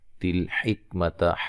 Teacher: ہا کو صحیح ادا کریں گے تلفظ کے ساتھ، اس کی تجوید، اس کے مخرج سے نکالیں گے اس کو، جو کہ وسط حلق ہے